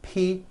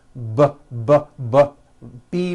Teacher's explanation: the only difference is my vocal cords are either vibrating or they're not vibrating so we say the P sound and the B sound are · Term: paired consonants